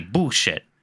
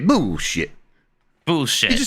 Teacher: He swallows the L a little bit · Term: swallow the L